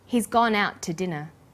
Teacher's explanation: The to is unstressed. When we link out, which is stressed, and to, which is unstressed, the final t sound in out is held slightly longer.